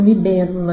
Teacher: Então, libélula aí é uma palavra proparoxítona porque ela tem a sua terceira sílaba contando da direita para a esquerda, mais forte, acentuada, tônica